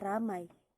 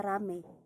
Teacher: Monoftongisasi yaitu perubahan dua bunyi vokal atau vokal rangkap atau diftong menjadi vokal tunggal atau monoftong